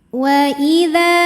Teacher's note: dza mad tabi'i zahiri sebab ada alif yang didahului baris fathah. Cara membacanya dzal panjang 2 harokat.